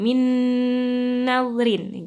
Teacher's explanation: Jadi min nadrin langsung masuk ke nun. Ya, nun masuk ke nun. Udah langsung ketemu, masuk mendengung. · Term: idgham bi gunnah